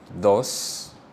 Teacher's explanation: in Spanish the letter D is pronounced like a th rather than the English D sound